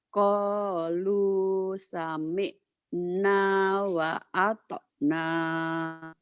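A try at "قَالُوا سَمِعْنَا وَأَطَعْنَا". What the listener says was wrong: Sudah pinter cuman merangkainya masih telat gitu ya. Merangkai katanya. Karena baca Quran itu harus merangkai. Harus kayak air ngalir gitu ya.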